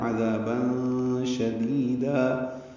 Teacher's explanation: عذابا شدیدا میں عین وسط حلق سے ادا ہوگا